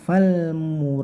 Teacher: tapi fal, singkat saja nggak pakai dengung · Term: lam disukun